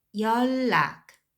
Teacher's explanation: 연락, when you pronounce those l affects right here, so you'd pronounce 열, like instead of a final consonant n, you'd pronounce l instead